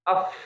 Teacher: makhraj huruf fa gigi seri atas bertemu dengan perut bibir bawah ini nih ya